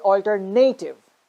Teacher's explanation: we are actually stressing the third syllable